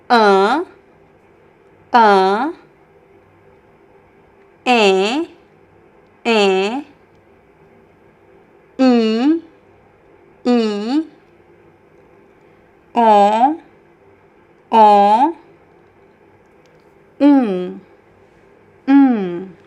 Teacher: But then all these vowels they have a nasal pronunciation and they are considered true nasal vowels which is different from English · So all these vowels, they have a nasal sound.